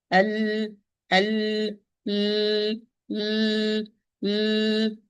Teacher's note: So the vocal cords are joining and they are vibrating, and there is an imprisonment of the breath. That's why the sound is clear. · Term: apparent letters